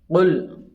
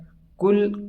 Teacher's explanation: قاف اس کو زبان کی جڑ اور نرم تالو سے لگا کر موٹا پڑھا جاتا ہے۔